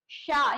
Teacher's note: श यानी हमारी जीभ जो है वो कहां पे स्पर्श कर रही है? हमारे तालव्य में।